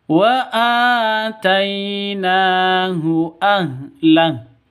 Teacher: Mad asli. Tai itu sifat lin, lentur, tidak boleh sentak ataupun dengung.